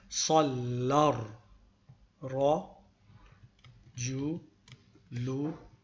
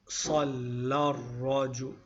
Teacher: So we say Sallar, Ra, Ju, Lu. And then we don't pronounce the alif because of the fact that we join